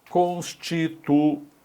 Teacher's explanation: um hiato, veja só, U com I, em que o I é tônico, formando sílaba sozinho, né? Então, hiato tônico I, por isso é acentuado, tá bom?